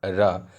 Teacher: एक र लुटा खाएगी। र पर जीभ लुटा खाती है और प्रकंपित करती है। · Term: प्रकंपित व्यंजन